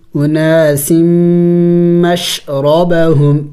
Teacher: قد علم علم کل اناس سین میم دو زیر سم میم مشدد ہے غنہ کریں گے